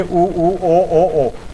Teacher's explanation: आप बिल्कुल समझ लेंगे कि हां अ यहां बीच में है तो मध्य स्वर ज़्यादा सक्रिय है जीवा का। और ये पीछे का हिस्सा है जीवा का जो ज्यादा सक्रिय है